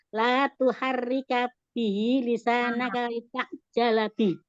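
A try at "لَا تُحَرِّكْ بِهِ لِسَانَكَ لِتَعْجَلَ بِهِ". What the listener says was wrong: Kenapa pakai H? La tuharik bihi. K-nya harus ada hamesnya. Rik. La tuharik.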